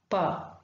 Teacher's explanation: Both the articulators, the lower lip and upper lip, there is a complete closure, and then suddenly there is the release of air.